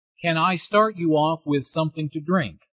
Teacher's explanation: since this is a yes/no question the intonation rises at the end